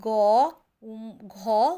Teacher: বর্ণগুলির উচ্চারণ গম্ভীর বলে এদের ঘোষ বর্ণ বলা হয়